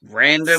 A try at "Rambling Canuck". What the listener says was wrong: Rambling Canuck. Not random. There's no D. There's no D. Rambling Canuck.